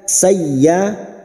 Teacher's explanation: ya fathah diikuti alif 2 harakat kita panjangkan